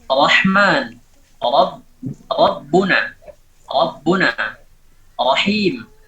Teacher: ra itu ditafkhimkan yang pertama ketika ra itu maftuhah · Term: ra maftuhah